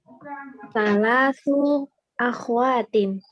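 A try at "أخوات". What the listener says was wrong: Akhawat ya, khoknya fathah. Akhawat.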